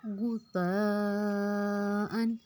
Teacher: غین کو ہم نے موٹا رکھنا ہے، غین پہ پیش ہے، لفظ کو غین کو موٹا کریں گے، تا کو ہم نرمی سے ادا کریں گے، اوپر اور نیچے کے دونوں دانتوں میں زبان کی نوک کو رکھ کے نرمی سے بغیر سیٹی کے ادا کرنا ہے۔